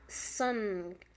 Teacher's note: the tongue blocks the passage of air through the mouth and directs it toward the nose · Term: nasal